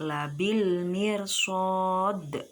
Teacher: makharijul hurufnya dal yaitu ra'sul lisan, ujung lidah, dan sifat-sifatnya yaitu jahar, syiddah, istifal, infitah, ismat dan qalqalah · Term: huruf dal